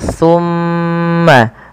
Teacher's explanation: itu wajib ditahan suara suara mimnya